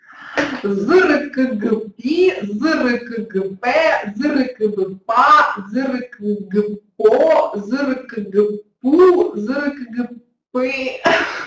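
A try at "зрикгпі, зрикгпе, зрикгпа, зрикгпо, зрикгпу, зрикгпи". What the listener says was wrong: Інколи вилітав звук к, але в цілому добре.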